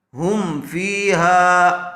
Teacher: زبر والے حرف کے بعد الف آیا ہوا ہے، الف مدہ ہوگا، تھوڑا کھینچ کر پڑھیں گے